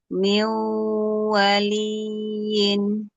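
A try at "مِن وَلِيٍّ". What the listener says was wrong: Kurang menekan. Jangan kurang. Waliin. Nggak ada mat di situ, jadi nggak boleh panjang. Yang panjang itu pada kadar gunah, pada gunahnya. Ayo, dirasakan dari hidung dan al-jauh.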